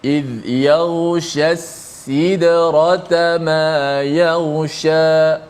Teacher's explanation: Pertama shin tengah lidah, tengah lidah. Kedua sin di hujung lidah.